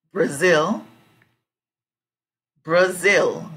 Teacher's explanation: Zil part is the strong syllable